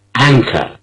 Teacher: The first syllable, which is stressed, is an. It's rather long. An. An.